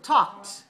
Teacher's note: Don't pronounce the L and don't pronounce the E.